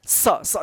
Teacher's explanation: और दंत स का बात है ना, वो जीभ जो है ना दोनों दांत के बीच में आता है, तब जाकर ये आवाज निकलता है स। देखिए फर्क, श श, जीभ जो है ना तालु पे गया, दोनों श के ऊपर, मूर्धन्य श और तालब श, ठीक है।